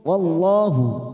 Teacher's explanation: lam jalalah kita baca tafkhim karena didahului fathah